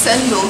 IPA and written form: ˈtʃɛndɒl (Cendol)